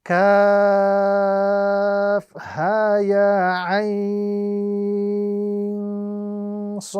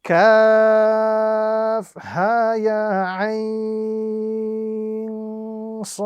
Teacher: those letters upon which we can see the mad, they must be stretched or prolonged to the duration of 3 to 5 seconds